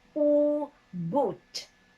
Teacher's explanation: The highest back vowel, where you round your lips 360 degrees, would be boot. Smaller rounding because it's high.